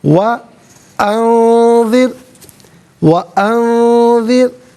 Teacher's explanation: وَأَنذِرْ وَأَنذِرْ، را ساکن ما قبل ذال کے نیچے زیر، را ساکن کو باریک کر کے پڑھا جائے گا، ملا کر پڑھیں گے۔